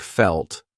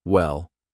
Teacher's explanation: dark L's come before a consonant so like felt or at the end of a word so like well